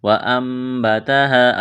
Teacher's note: نون ساکن کے بعد با ہے تو اقلاب کریں گے، آواز ناک میں چھپائیں گے، یعنی نون کو میم کے ساتھ تبدیل کرنا ہے ۔ وَأَنبَتَهَا الف مدہ ہے، ایک الف کے برابر کھینچنا ہے،